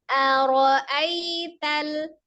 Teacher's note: Jadi ketika kita turunkan aro, kan aro, nah seolah mengayun a, kemudian ro-nya menukik ya, seharusnya ro lebih tinggi daripada a-nya, lebih naik maksudnya ya